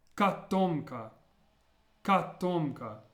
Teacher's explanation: notice how the first O is pronounced more like an A sound